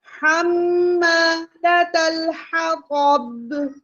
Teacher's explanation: میم مشدد تو ہمیں کیا کرنا ہے؟ غنہ لازمی کرنا ہے